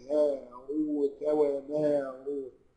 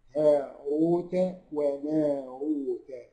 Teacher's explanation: هاء وما كله مرقق اهو، بس الراء بس هي اللي مفخمه